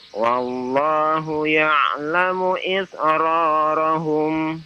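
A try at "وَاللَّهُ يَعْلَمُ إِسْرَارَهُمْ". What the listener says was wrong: Iya, baik. Barakallahu fiik ya. Bagus ya.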